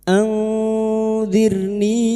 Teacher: Qola anzir nun sukun bertemu d ikfa hakiki. Kita samarkan bunyi nun sukun dan mendengung selama tiga harakat. [Musik] Anzirni ro sukun yang didahului kasrah kita baca tarkik tipis. · ra sukun yang didahului kasrah kita baca tarkik tipis.